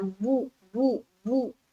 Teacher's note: मारूफ पढ़ना है, मजहूल आवाज से बचनी है, यानी के बापेश बो नहीं पढ़ना है, बापेश बू पढ़ना है, बू बू बू।